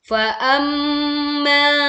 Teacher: Hum the mim with tashdid.